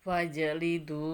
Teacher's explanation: Fajanya harus terlihat jelas karena qolqolah